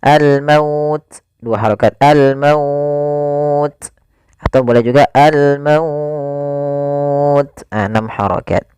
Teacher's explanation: Yaitu mad lin yang panjangnya adalah kita boleh panjangkan 2 harokat, boleh 4 harokat, dan boleh pula 6 harokat